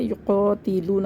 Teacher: الف سے پہلے زبر ہے، الف مدہ ہے، اس کو ایک الف برابر کھینچ کے پڑھیں گے